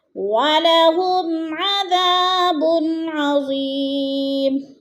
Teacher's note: بن پہ اب پھر ادھر اظہار ہو رہا ہے، دو پیش کے بعد حروف حلقی میں سے عین آ گیا تو ادھر اظہار ہو رہا ہے، لفظ کو ظاہر کر کے پڑھنا ہے. · اذا کو بھی تھوڑا سا لمبا کرنا ہے ہم نے، الف مدہ ہے